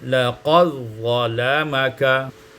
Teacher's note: Laqad pada ayat 24, laqad zalamaka, idghamud dal fi dha, diidghamkan dal pada dha menjadi laqad zalamaka.